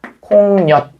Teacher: 그 다음에 소리가 덧나야 되기 때문에 얘는 최종적으로는 콩엿, 니은이 소리가 덧나서 콩엿 이렇게 발음이 될 겁니다. 그래서 얘는 우리가 니은이 덧났다라고 해서 니은 첨가 현상입니다.